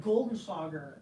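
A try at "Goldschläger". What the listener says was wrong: Goldschlager? There are no N's. There are no N's in that word. Goldschlager.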